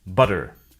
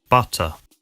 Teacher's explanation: In the US, they sometimes sound like D, an alveolar tap instead of T, an alveolar stop.